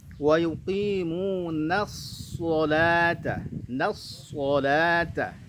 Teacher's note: Perhatikan shadnya itu huruf tebal, nunnya huruf tipis. Jangan sampai nun ikut jadi tebal gara-gara bertemu dengan huruf shad.